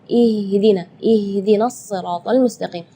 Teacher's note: makhraj huruf H itu adalah dari tenggorokan. Jadi keluarnya tipis karena H itu termasuk huruf di antara 28 huruf hijaiyah yang paling lemah adalah huruf H.